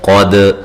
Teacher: قاف کو موٹا ادا کرنا ہے، دال پہ قلقلہ کرنا ہے